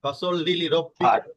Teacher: হাটা কিন্তু গলার মাঝখান থেকে উচ্চারিত হবে